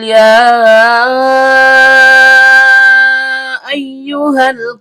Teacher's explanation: Panjangnya boleh memakai dua harakat dan juga boleh memakai empat harakat. Tapi lagi-lagi sebagaimana sebelumnya kami telah jelaskan bahwa di Indonesia memakai empat harakat karena kita memakai jalur asyatibi dan setiap panjang keluar dari rongga mulut. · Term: mad jaiz munfasil